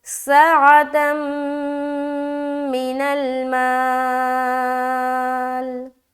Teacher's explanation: دو زبر کی تنوین کے بعد میم آ گیا تو یہاں پر ہم ادغام کریں گے، وہ بھی غنے کے ساتھ، اور جو کہلاتا ہے ادغام ناقص، تو یہاں پر غنے کے ساتھ ملانا ہے۔